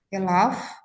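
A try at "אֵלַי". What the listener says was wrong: Elai, bukan Elaf. Kalau Elaf kepadanya, Elai kepadaku.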